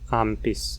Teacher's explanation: essa nasal velar vai se tornar uma nasal bilabial pela influência do P.